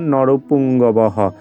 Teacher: তাহলে বিসর্গর পরিবর্তে আমরা জানি হয়ের মতো উচ্চারিত করতে হয়, বাক্যের শেষে থাকলে সেই বিসর্গর পরিবর্তে আমরা এখানে হয়ের মতো উচ্চারণ করব।